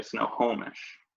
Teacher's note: personally if I think about the way I'd naturally say it I would say I stress the middle syllable